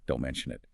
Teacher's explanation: the correct casual delivery is much softer, smoother, don't mention it. The lack of hard stress is what makes it sound easy and polite.